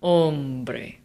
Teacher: this word this word ends in a vowel which means that the emphasis naturally falls on the second to last syllable